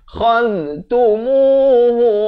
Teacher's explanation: Kha ni di hujung kerongkong bertemu dengan hujung lidah